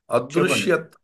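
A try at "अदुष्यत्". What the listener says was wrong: ఉకారం ఉకారం ఉకారం అరుకారం కాదు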